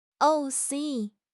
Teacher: Ot plus i becomes osi with the sliding over.